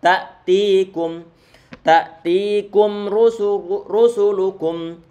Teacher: Ini ta'tikum ini bacaan matabi'i karena ada ya sukun sebelumnya dia berupa kasrah, berarti dibaca 2 harokat dipanjangkan.